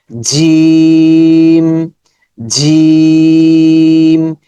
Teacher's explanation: জিহ্বার মধ্যখান উপরের তালুর সাথে, জিহ্বার মধ্যখান উপরে তালুতে স্পর্শ, উপর দিকে চলে যাবে, শক্ত সাউন্ড হবে।